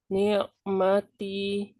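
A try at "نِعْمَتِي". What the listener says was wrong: Kurang mengalir ainnya. Ni'matia. Coba usahakan sedikit ya di bawah itu ya. Di tengah-tengah kan dia. Ni'matia. Ni'matia.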